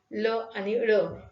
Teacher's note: तर ही जी व्यंजन आहे ती उच्चारली जात असताना तोंडामध्ये मध्यभागी हवा अडवली जाते, पण ही अडवणूक स्पर्श व्यंजनाच्या वेळी होते तशी होत नाही. तर जिभेच्या दोन्ही कडांच्या बाजूने हवा एकसारखी बाहेर येत राहते आणि त्यातून जे ध्वनी निर्माण होतात त्याला पार्श्विक व्यंजन म्हणतात.